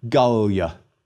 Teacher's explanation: 3 syllables, but the penult is short, so we accent the first syllable.